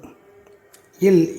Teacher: இல், இது மேல்வாய் பல்லின் அடிப்பகுதி நாக்கின் ஓரங்களை தடித்து நெருங்குவதால் பிறக்கிறது.